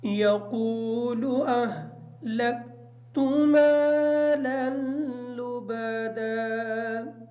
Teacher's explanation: یقول کی جو قاف ہے اس قاف کو موٹا بھی پڑھیں گے اور اس کو تھوڑا سا لمبا کر کے پڑھیں گے کیونکہ اس کے بعد واو ساکن ہے اور واو ساکن کے بعد والا حرف جو قاف ہے اس کی حرکت پیش ہے اس وجہ سے یہ واو مدہ ہے. · اہلکتو کی جو ہا ہے اس ہا کو کلیئر پڑھیں گے اور کاف باریک پڑھیں گے